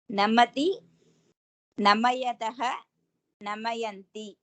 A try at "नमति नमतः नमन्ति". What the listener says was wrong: Why you are taking ya?